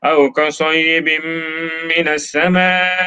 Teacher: Bim tanwin jumpa mim, idgham ma'al gunnah, gunnah.